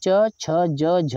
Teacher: इसको इसका उच्चारण स्थान है तालू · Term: च वर्ग